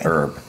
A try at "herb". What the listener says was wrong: We don't say the H in the United States.